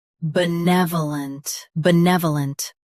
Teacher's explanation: Both US and UK have the same pronunciation of this word. Stress ne. Keep v soft and finish lent clearly.